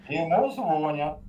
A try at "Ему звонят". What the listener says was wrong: Звонят. Ударение надо правильно ставить.